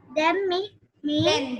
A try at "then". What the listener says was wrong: Then, not them. It is then.